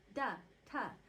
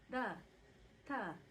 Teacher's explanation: instead of oh just oh does that make sense and uh the D's and T's are dentalized which means we bring the tip of the tongue onto the teeth · we bring the tip of the tongue onto the teeth instead of like how in English we put the tip of the tongue behind the upper teeth